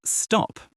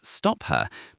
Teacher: At the end of words, especially for British English, that aspiration is usually reduced or even absent.